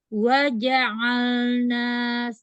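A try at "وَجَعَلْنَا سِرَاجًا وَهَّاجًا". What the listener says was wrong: Atas lagi. Buka atas. Buka rahang atas. Bergerak ke atas. Jadi kuncinya terkadang huruf kita bermasalah, itu di huruf sebelumnya kita bermasalah. Kalau jimnya bukan fathahnya sempurna, ngambil ainnya cuma tinggal tenggorokan yang tengah bergerak. Tapi ketika jimnya itu jan yang nggak terbuka rahangnya, sehingga pita suara nggak terbuka, ainnya kita kesulitan. Jadi huruf yang bermasalah itu kadang-kadang dimulai dari huruf sebelumnya.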